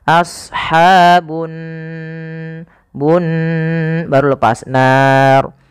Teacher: di sini ada gunah pada lafal Nun cara membacanya yaitu ditahan suara nunnya